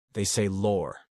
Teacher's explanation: It's all about that stretched aw sound.